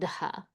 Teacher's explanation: So we want to find the voiced letter of that mouth position and also add aspiration. So the t becomes a d, but then also with aspiration.